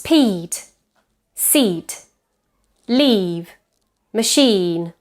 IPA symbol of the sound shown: iː